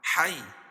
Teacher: یا ساکن سے پہلے زبر ہے، اس کو نرم آواز کے ساتھ جلدی ادا کریں گے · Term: یا لین